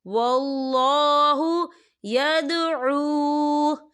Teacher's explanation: واو ساکن ہے، واو ساکن سے پہلے پیش ہے اور اس پر مد بھی ہے، تو ہم اسے 4 حرکت کے برابر کھینچ کے پڑھیں گے